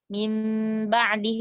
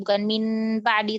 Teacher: nun sukun bertemu sama huruf mim, maka dia berubah jadi mim. Bunyinya jadi kayak mim ba'di, bukan min ba'di, bukan min ba'di, tapi udah berubah ke makhraj mim.